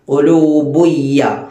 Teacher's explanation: സുക്കൂനുള്ള നൂനിനോ തൻവീനിനോ ശേഷം യാ, വാവ്, മീമ്, നൂന് ഈ നാലക്ഷരത്തിൽ ഏതെങ്കിലും ഒരക്ഷരം വന്നാൽ ഖുലൂബുൻ എന്ന് ഓതേണ്ടതിനു പകരം ഖുലൂബുയ്, ഖുലൂബുയ് എന്ന് പറഞ്ഞ് രണ്ടാമത്തെ യായിലേക്ക്, ആ ശേഷം വരുന്ന യായിലേക്ക് ചേർക്കും. ഖുലൂബുൻ യ എന്ന് പറയുന്നതിന് പകരം ഖുലൂബുയ്യ. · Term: ഇദ്ഗാം ബിഗുന്ന